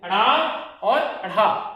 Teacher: जिह्वा मूर्धा को स्पर्श कर तुरंत नीचे हो जाए, जिह्वा मूर्धा को स्पर्श कर तुरंत नीचे हो जाए, उसे क्या कहा जाता है, द्विगुण या फिर उच्छिप्त व्यंजन कहा जाता है। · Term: उत्क्षिप्त व्यंजन